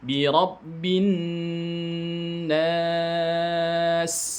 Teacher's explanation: Nah, jadi nanya panjangkan 6 harokat, kemudian matikan huruf sin. Huruf sin di situ dia punya sifat sofir. Bunyi desis namanya sofir. Kemudian bunyi desis itu harus dirokhwahkan, harus dibaca mengalir ya.